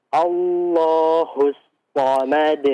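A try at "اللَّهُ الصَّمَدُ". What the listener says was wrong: Nah, itu agak kecil ya. Hak yang besar. Kalau antum perhatikan di pembahasan makhraj halqi ya. Dia makhrajnya berada di yang paling dasar ya. Ha, ha. Allahu. Allahus samad.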